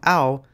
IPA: au